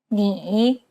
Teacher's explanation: a third tone listen to an example which uses this tone it's the most unique tone out of all the tones because the pitch dips and then rises